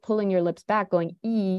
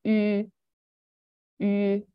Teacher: So from my standpoint as a linguist and as a native speaker of English, that U sound, it's actually like what your mouth is doing is you're making the E sound and then you're just rounding your lips when you do it. So instead of pulling your lips back going E, you're going U.